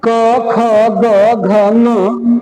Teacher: जीभ का पिछला भाग कोमल तालू को स्पर्श करता है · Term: कंठ